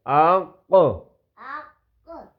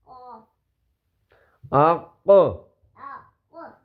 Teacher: یہ بیٹا گلے کے بالکل آخر سے اس کی آواز ہے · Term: قاف